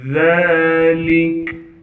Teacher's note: وَأَنَّا مِنَّا الصَّالِحُونَ وَمِنَّا دُونَ ذَلِكَ، ذال کو باریک کر کے پڑھیں گے اور ذال پر کڑا زبر ہونے کی وجہ سے ذال کو ایک الف کی مقدار کھینچیں گے، لام کو بغیر کھینچے پڑھنا ہے، کاف کو باریک کر کے پڑھیں گے، وقف میں کاف کو ساکن کر دیں گے